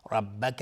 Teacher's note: را حکمش استعلا چون فتحه داره